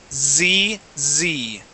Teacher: that S sound, that is simple for most of you, saying S, but it's the vibration that we need to work on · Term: Z sound